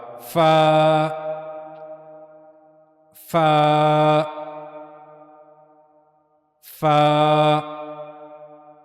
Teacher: اوپر کے اگلے 2 دانتوں کے کنارے نیچے کے ہونٹ کے اندرونی حصے کو چھوتے ہیں